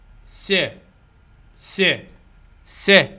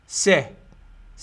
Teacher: اذا صوت الس هو اورال لان الهواء يخرج من خلال الفم